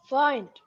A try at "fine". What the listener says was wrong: Fine, not find, fine.